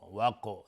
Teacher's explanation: قاف قلقله میخواد و از حروف استعلا هم هستش غلیظ تلفظ میشه